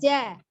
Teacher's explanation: Tengah lidah yang bertemu dengan langit-langit bagian atas ya, bagian tengah.